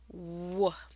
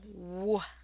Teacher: The W is pronounced by tensing and rounding your lips and then relaxing them while your vocal cords vibrate as the air escapes.